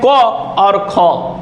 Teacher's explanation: क और ख जब बोलते हैं तो इसमें स्वर तंत्रियां आपस में कंपन नहीं करती हैं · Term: अघोष